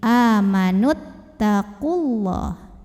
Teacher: Jadi kalau wasol, nunnya nggak punya pemanjang, pendekin. · Waw sukun ketemu ta sukun, maka terlepaslah huruf sukun yang pertama. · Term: takhallus bil hadfi